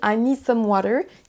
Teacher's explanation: alors qu'en anglais on va accentuer plus les mots need et water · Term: accentuation